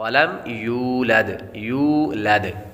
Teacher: یولد واو حروف مدہ ہے، اور آخر میں دال ساکن ہے، اور دال حروف قلقلہ میں سے ہے، اور جب حروف قلقلہ ساکن ہوں تو ان میں قلقلہ خوب ظاہر ہوگا۔